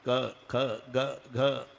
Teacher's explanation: क ख ग घ हे कंठे स्थान आहे. इथे उगम आहे.